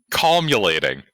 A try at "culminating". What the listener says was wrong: No, that's still not right. No, it's culminating. You're like putting the L in the complete wrong place, and it makes the word so much funnier.